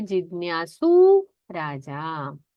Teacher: जिज्ञासु जो ह्रस्व था उकार, उसका दीर्घ हो जाता है